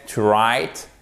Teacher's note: On ne prononce pas le W, ok?